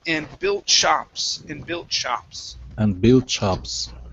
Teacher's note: give me just a little bit more sh a little bit more sound on there because it was sounding a little bit like you were saying chops